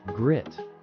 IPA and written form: ɡrɪt (grit)